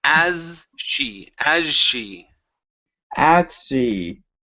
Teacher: give me a Z sound, then into an SH.